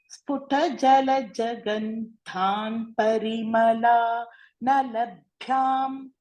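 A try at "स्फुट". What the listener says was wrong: Bhagini, tatra again, you tend to pronounce the next letter as Mahaprana. So, sputha itina, sputa. This ta should be Alpa Prana only. Please pay attention to that.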